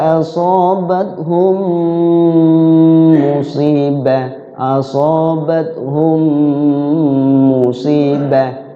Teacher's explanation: mim yang pertama ke yang kedua kemudian di situ jangan tergesa-gesa di mim yang k duanya itu ada durasi waktu ya sekurang-kurangnya dua ketukan asobathum musibah asobathum musibah jangan asobathum musibah jangan diputus mimnya ya · jangan diputus mimnya ya jangan diputus karena Idgham Mimi di situ ya mimnya tasdid ditahan